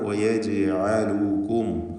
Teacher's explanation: ജീമിൻ്റെ സുക്കൂൻ ഖൽഖല സുഗ്റ നൽകി ഹറക്കത്ത് പോലെ ശബ്ദം ചലിപ്പിക്കേണ്ടതാണ്